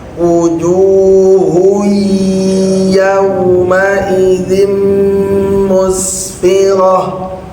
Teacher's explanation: Kaidahnya idgam ghunah mesti ditahan.